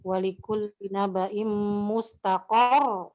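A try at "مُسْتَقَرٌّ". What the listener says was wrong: Bukan rohnya, qafnya yang ditekan.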